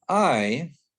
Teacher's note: It has two articulations. So it starts with that ah, that open wide and say ah articulation, and then moves quickly to a glide that's actually somewhere between I and y. And those two are already really close, I and y. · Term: long I